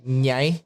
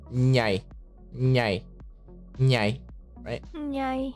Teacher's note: And then when you're trying to say nyai, right, it's more of the middle of your tongue going to the roof of your mouth